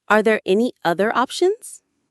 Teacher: It went up at the end, which is perfect for a yes no question. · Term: intonation